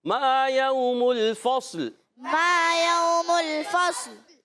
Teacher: فا کو صاد سے ملائیں گے، ہلائیں گے نہیں مگر صاد کو موٹا بھی رکھنا ہے، فا کو باریک، صاد کو موٹا۔ اچھا، لام ساکن ہو جائے گا، لام کو بھی ہلائیں گے نہیں، یاد رکھنا ہے، ٹھیک ہے۔